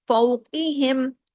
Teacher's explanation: فو باریک اور آگے ہم بھی باریک، قاف ہیوی